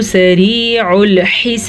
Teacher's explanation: را باریک ہے، را کے نیچے زیر ہے تو را باریک پڑھی جائے گی